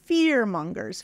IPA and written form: fɪr'mʌŋɡərs (Fearmongers)